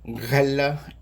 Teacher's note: And the reason this is tricky is because it's made in the same place of the mouth where we made the sound ga, that kind of back of the mouth, back velar sound. But instead of that easy to do stop sound, ga, ga, it is a fricative. And fricatives are sort of like when we make the letter F, we push air through an obstruction.